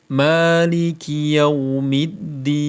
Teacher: Jadi ma-nya dibaca panjang 2 harakat. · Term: panjang mat tabi'i